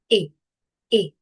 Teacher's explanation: c'est une voyelle mi fermée antérieur non arrondi. Écartement moyen d'élèvre, on dit comme ça et et alors la bouche est en proverte. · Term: le son et, voyelle mi-fermée antérieure